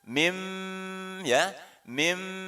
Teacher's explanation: Ada mim kecil di atas itu. Iqlab ya, maka melebur menjadi mim. Mim ada dengung di situ.